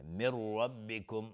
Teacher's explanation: نون ساکن بعدش را، ادغام بدون غنه